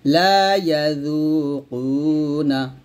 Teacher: যু পাতলা হবে, জিহ্বার আগে উপরে আগে লাগাবেন